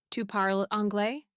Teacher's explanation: Just say it with a rising tone.